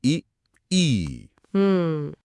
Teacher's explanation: अग्र, जब जीभ का आगे का हिस्सा सक्रिय हो,